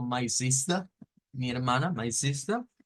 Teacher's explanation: De los británicos no suenan las eres en estas palabras al final